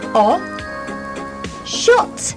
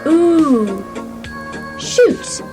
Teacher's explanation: So, shot has a short sounding vowel, O. Shot and Shoot has long-sounding vowels. Ooh. Shoot.